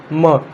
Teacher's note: म का होता है ओष्ठ, म, तो ओष्ठ से म का उच्चारण होता है